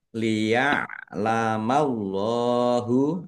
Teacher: Allahnya dibaca tebal karena harokat di depannya fathah. Lam fathah berdiri mat tobi'i, panjang 2 harokat.